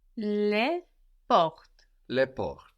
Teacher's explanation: port with an S and port in the singular sound the same